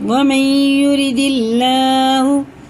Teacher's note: اللہ کا نام زیر سے تو باریک پڑھیں گے